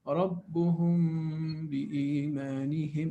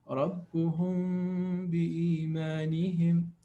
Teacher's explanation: So we have meme followed by ba. So 2 harakat hiding the meme. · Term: إخفاء شفوي